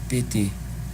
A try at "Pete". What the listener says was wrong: That's not 2 syllables, it's just Pete, Pete. Again, longer. Focus on the longer vowel sound.